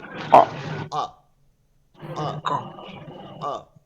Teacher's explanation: এরপরে কফ যেটা আছে, কফ উপরে দুই নুক্তা দেখেন, কফ, এইটার প্রথমটা অ, এটা ক আছে বাংলা যেটা, ওইটাকে এই জিব্বার গোড়াটা এইখান থেকে গলার শেষ থেকে শুরু হয়ে জিব্বার গোড়াটা আইয়া তালুতে লাগবে, উচ্চারণটা ভারী রাখতে হবে।